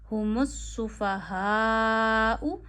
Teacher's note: हा पूरा अदा करना है गले के आखिर से, इसे खाना नहीं है, सुफ़हा नहीं पढ़ना, सुफ़हा नहीं पढ़ना, इसे भारी अदा करिए।